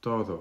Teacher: You will notice that your tongue is at the back of your front teeth. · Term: D and T sounds